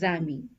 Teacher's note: this word ends with a consonant so we don't pronounce the S but it's followed by a word that starts with a vowel a so what we do is we do a link this is called as lion so this will be pronounced as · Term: linking